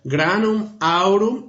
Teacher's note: even in poetry the M evaporates so especially in front of the vowels you don't hear it